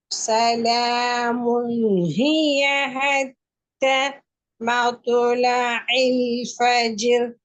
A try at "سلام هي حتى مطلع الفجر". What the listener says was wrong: حتى مطلع الفجر حتى என்ற அப்படி நீ பாடக்கூடாது அதை சேர்க்கணும் حتى مطلع الفجر